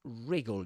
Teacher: So it equally pronounced in British and American English. The W at the beginning, the W is not pronounced actually.